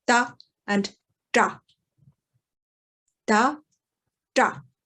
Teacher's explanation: we have a retroflex form of ta. So you pull your tongue back a little bit more